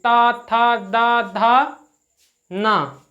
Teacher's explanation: जब आप ता बोलेंगे, था बोलेंगे, दा बोलेंगे तो आपकी जीभ जो होगी वो दांतों के बीच में आ जाएगी।